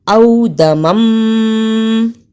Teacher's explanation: او دمم، اسے او دامم نہیں پڑھنا. الف زبر واو او، یہ حرف لین ہے، اسے جلدی پڑھا. دال زبر دا، اس کے ساتھ کوئی ایسا لفظ نہیں لکھا جس میں کہ ہم اسے لمبا کریں.